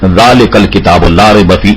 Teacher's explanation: پہلے منہ کے جو پہلے دانت ہیں دو اوپر کے، وہاں اگر زبان کی نوک لگائی جائے تو یہ زال وہاں سے ادا ہوگا